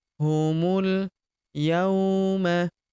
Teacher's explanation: Huruf mu langsung lompat masuk ke huruf lam yang berharakat sukun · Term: hamzah wasal